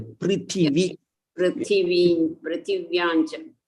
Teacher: People say Prithyancha or something like that. They will forget this T.